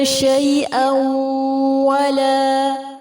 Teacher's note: تنوین کے بعد واو ہے، ادغام غنہ کے ساتھ ہوگا